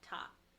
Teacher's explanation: And for third person, for he, him, she, her, and it, its, is literally pronounced the same, and the pinyin is the same. It's ta with a high flat tone. Ta, first tone.